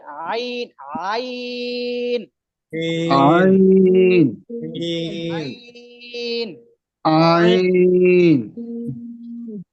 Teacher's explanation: আইন এই আইন মধ্যে একটা ঢেউ খেলবে, যেমন সমুদ্রের মধ্যে যেমন ঢেউ উঠে, তেমনি ভাবে এই আইন হরফটা উচ্চারণের ক্ষেত্রে যখন আপনি উচ্চারণ করবেন তখন আপনার গলার মধ্যখানে একটা ঢেউর মতন হবে